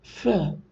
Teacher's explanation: it is a narrow opening between the upper teeth and the lower lip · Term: labiodentals